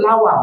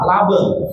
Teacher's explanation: Orang Madura kesulitan mengucapkan huruf W, bergeser menjadi B. Huruf B dan W itu sama-sama huruf bibir.